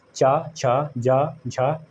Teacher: ये होता है तालव्य, जिसे कहते हैं तालव्य। जो वायु निकलती है वो तालु को छू के जाती है